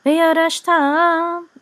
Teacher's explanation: So accent is on ta.